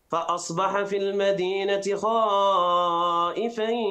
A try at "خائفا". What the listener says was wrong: فخم الخاء. خائفا. فخم الخاء.